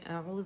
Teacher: इसमें buzzing sound नहीं होगा, ज़ाल बारीक है